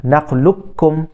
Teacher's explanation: Bila kita sebut tu qaf temu kaf, qaf tu hilang. Bunyi dia hilang. Sebab dia masuk terus kepada kaf.